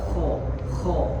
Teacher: Al-kha dalam keadaan fathah dia harus dibaca tebal.